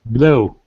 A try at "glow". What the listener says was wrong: That's it.